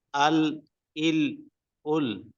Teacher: জিহ্বার আগার কিনারা সামনের উপরে দাঁতের মাড়ির সঙ্গে লাগাইয়া লাম উচ্চারিত হয় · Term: লামের মাখরাজ